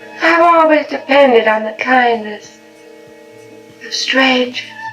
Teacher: You hear how there's no R in strangers? Strange. That's a non-rhotic accent.